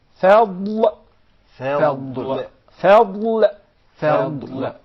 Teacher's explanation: I'm pronouncing the dad of the word fadl from the right side of the tongue.